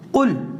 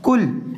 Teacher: قاف موٹی قاف کے ساتھ، اس کا مطلب ہے کہہ دیجئے، اور کل باریک کاف کے ساتھ